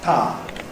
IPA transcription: paː